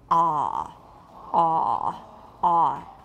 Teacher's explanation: let's make a very, very low, very, very back ah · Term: cardinal vowel 5